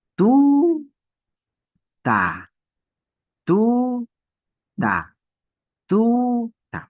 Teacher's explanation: Y la mayor fuerza de voz va a estar en la penúltima sílaba. No en la última, en la penúltima sílaba.